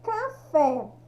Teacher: O acento aqui é no fé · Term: sílaba mais forte